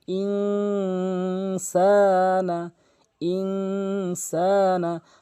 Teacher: এই 15টি হরফ যদি আপনি কখনো নুন সাকিনের পর দেখেন তাহলে নুন সাকিনকে আপনি নাকের ভিতর নিয়ে পড়বেন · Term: ইকফা